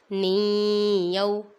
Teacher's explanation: نون ساکن کے بعد حرف یرملون میں سے یا آ رہا ہے، ادھر ادغام ہوگا، گنہ کریں گے۔